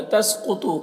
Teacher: قاف اور طا دونوں کو پر پڑھیں گے، حروف مستعلیہ میں سے